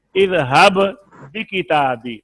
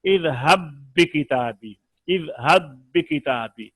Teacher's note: تو اس میں شرط یہ ہے کہ پہلا ساکن ہو، جس نے ملنا ہے وہ ساکن ہو دوسرا متحرک ہو، تو پہلے کو دوسرے میں جب ملائیں گے تو ملنے کے بعد وہ ایک حرف مشدد معلوم ہو، جیسے دیکھیے اذهب بکتابی، با کے نیچے زیر تھا، اذهب بکتابی، جب ہم نے ملایا تو اب ایک بننے کے بعد دوسرے با کے اوپر شد آ گئی